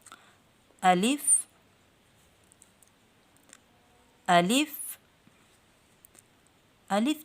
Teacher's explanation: الف جو ہے یہ بحالت مدہ منہ کے خالی حصہ سے ادا ہوتا ہے۔